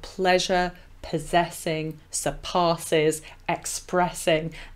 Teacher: alliteration is particularly evident in this quatrain with the plosive p sounds